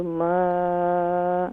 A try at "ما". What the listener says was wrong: الف نہیں ہوگا، الف زبر ما.